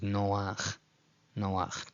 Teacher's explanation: don't treat this as a diphthong, this is two different vowels